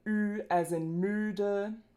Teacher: Vowel length is phonemic in German and ü is a long vowel. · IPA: /y:/